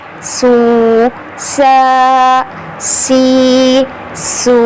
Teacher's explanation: سین کو سختی کے ساتھ, سیٹی والا حرف ہے نا سین, تو سیٹی کا ساؤنڈ نکالنا ہے